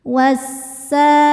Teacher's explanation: Sa hukumnya mad tabi'i dhahiri sebab ada alif sebelumnya fathah. Cara bacanya panjang 2 harokat.